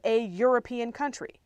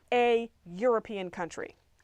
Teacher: European starts with an E, which is a vowel, but it sounds with a y sound, which is a consonant sound. It's the Y as consonant sound.